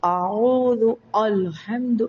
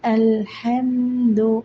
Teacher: ഹംസ ഉച്ചരിക്കുമ്പോൾ അ ഉച്ചരിക്കുമ്പോൾ തൊണ്ടയുടെ താഴെ അറ്റത്തുനിന്ന് താഴ്ത്തി ഉച്ചരിക്കണം